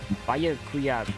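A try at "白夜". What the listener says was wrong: But BYAAACK it's pronounced as one syllable, so it's Byakuya.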